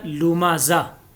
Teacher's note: गोलता जब भी हालत वक्फ़ में आए तो वो हा बन जाती है